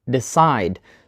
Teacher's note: we put the stress on the second syllable sigh right decide not decide and not decide now you can